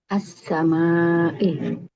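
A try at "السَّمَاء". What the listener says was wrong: Di wakaf. Jadi disukunkan. As-sama.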